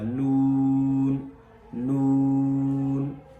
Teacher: جو مخرج لام کا ہے، را کا ہے، بالکل اسی کے ساتھ ملتا جلتا نون کا مخرج ہے، یعنی زبان کی نوک اور اوپر کے دانتوں کی جڑ، وہاں سے لگنے سے نون ادا ہوگا۔